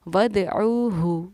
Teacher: یہاں پہ عین ہے، اس کو حلق سے ادا کرنا ہے